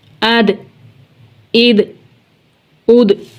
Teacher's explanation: دال حروف قلقلہ میں سے ہے، جنبش ہوگی